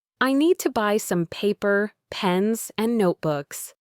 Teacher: my voice will go up on each item to show there's more coming. And then it will fall on the last item to signal the end of the list.